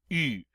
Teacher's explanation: It's like saying a long E sound in English through rounded lips. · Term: U sound